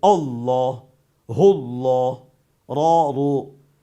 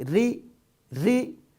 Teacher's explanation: زبر اور پیش ہو را اور اللہ پر موٹا کر کے، اللہ اللہ را رو. لیکن اگر زیر و تو باریک